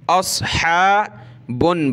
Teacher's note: اصحاب النار، اس، صاد کو موٹا کریں، حمزہ صاد زبر اس، ہا کھڑا زبر ہا، گلے سے نکالیں